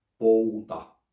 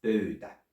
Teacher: One of them is a back vowel diphthong, pouta, while the other one is a front vowel diphthong, pöytä. And the more specifically you pronounce it in the back or in the front, the more unambiguous you are in what you want to say, and the more Finnish you sound.